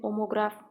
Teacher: Qraf da vurğu qəbul etmir, omoqraf qrafdan əvvəldədir.